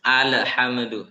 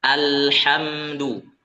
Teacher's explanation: Kita tunaikan huruf lam itu kita baca dengan tawassut, pertengahan ya, antara syiddah dan rakhawah.